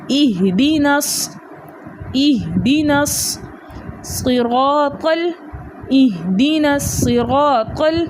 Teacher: نون کو صاد کے ساتھ ملا کے پڑھنا ہے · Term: اجتماعی ساکنین فی کلمتین